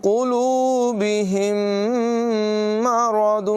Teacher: میم ساکن کے بعد ایک اور میم ہے، یہاں غنہ کریں گے، ادغام شفوی ہے۔